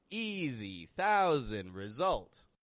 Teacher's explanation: 3 words that we've covered where S sounds like a Z.